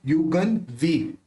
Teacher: तो यहाँ पे देखिए युगन वी, व बोलते समय दोनों होठ मिलेंगे नहीं तो उसका उच्चारण न ही होगा।